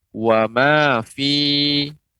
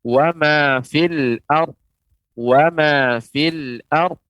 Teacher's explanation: Ketika berhenti, maka dibaca dengan panjang. Wa ma fi. Namun ketika dia bersambung, ya, dengan al-ard, maka ya yang itu merupakan huruf mat dianggap tidak ada. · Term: huruf mad